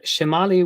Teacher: mutific so it starts slow on mutt whereas in the word shimali which has the accented syllable in the middle so in the penultimate position we can hear that that's where the low tone is in